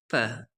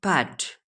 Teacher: a plosive like p, p in pat has a burst of energy at the release of the closure, which can be seen as a spike in amplitude on a sound wave.